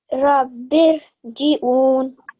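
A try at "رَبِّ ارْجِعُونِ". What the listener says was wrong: This ra was perfect, the second one. But the first one, say that again. So with more thicker sound.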